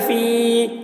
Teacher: لا یموت، فا یا زیر فی، یا ساکن سے پہلے زیر ہے، یا مدہ ہوا، اس لیے یا مدہ کو ایک الف کے برابر کھینچ کر پڑھیں گے